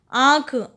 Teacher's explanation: आंख में फिर से नाक और मुंह दोनों से आवाज आई, तो चंद्र बिंदु लगा दिया।